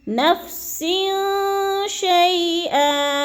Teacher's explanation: عن نفس شیئا، نفسن میں دیکھیں دو زیر تنوین ہے، یعنی دو زیر ہیں، آگے کیا ہے، شین آگے تو ادھر کیا ہے، اخفا ہو رہا ہے۔ نفس شیئا، اخفا یعنی آواز کو ناک میں ہم نے چھپانا ہے، غنہ کرنا ہے، اخفا کرنا ہے۔